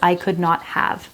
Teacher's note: the word have in English gets reduced it's almost like non-existent sometimes